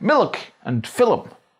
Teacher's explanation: sometimes extra syllables are inserted after the letter L. This is also brought over into English, giving words like milk and film. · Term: epenthetic vowels